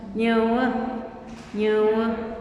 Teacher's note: el schwa mixteco es más cerrado